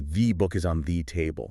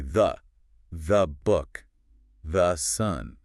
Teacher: The vowel collapses into a schwa so we can get to the next word faster. It's like the word the actually shapeshifts depending on how important it is in the sentence.